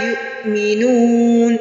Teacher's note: یو پہ جھٹکا آئے گا کیونکہ حمزہ جب بھی ساکن ہوتا ہے تو یہاں پہ جھٹکا آتا ہے